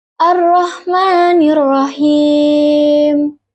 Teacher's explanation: huruf ro makhrajnya itu di atas lidah yang menempel pada langit-langit mulut